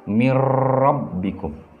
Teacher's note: Nun matinya hilang atau tidak dibaca, tetapi masuk ke dalam ro yang di sini. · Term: idgham bila gunnah